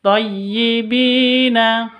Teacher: Bi panjang dua ketuk ada Ya Sukun diawali dengan kasrah